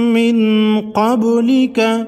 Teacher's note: با ساکن کو ہلا کر پڑھیں گے۔